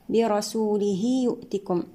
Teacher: وآمنوا الواو هنا مد طبيعي وصلا ووقفا، برسوله يؤتكم هنا مد صلة صغرى يمد بمقدار حركتين